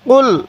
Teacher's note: এই কফটা উচ্চারণের সময় গলার মধ্যে হালকা ধাক্কা দিব, তাহলে এই কফটা সহি উচ্চারণ হবে।